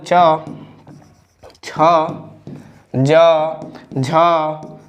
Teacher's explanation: वे व्यंजन वर्ण जो हमारे तालु से उच्चारित होते हैं, तालु से निकलते हैं, तो उन्हें हम तालव्य व्यंजन वर्ण कहते हैं।